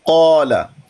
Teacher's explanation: तो ये है हम हुरूफ तफ़हीम को, हुरूफ तफ़हीम जब आते हैं अलिफ मद्दा पर तो अलिफ मद्दा को भी मुफ़ख़म कर देते हैं। तो मुफ़ख़म पढ़ते हैं, अलिफ को भी मुंह भर के पढ़ते हैं